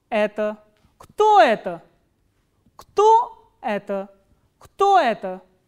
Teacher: normally the pitch goes up on the interrogative word and then it falls flat towards the end